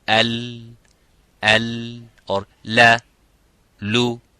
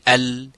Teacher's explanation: on both sides the air is going and flowing out to produce that sound of lam